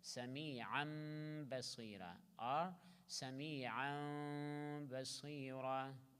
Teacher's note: To completely change tanween by mim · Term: idgham of tanween